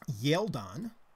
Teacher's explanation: the G sound became a palatalized Y sound, a secondary little vowel sound between that consonant and the vowel, the E vowel, developed a little E sound.